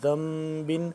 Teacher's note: نون ساکن کے بعد جب با آ جائے تو آواز ناک میں لے جاتے ہیں، اس کو آواز کو ناک میں لے جاتے ہیں اور میم کی آواز پڑی جاتی ہے۔